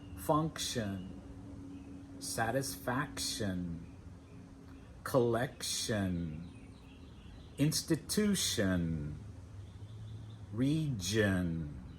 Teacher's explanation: The ion ending is also pronounced uh. uhn